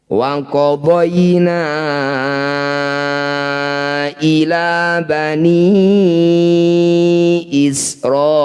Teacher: Na yang ditandai dengan layar dipanjangkan sebanyak lima harakat atau lima ketukan. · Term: mad jaiz munfasil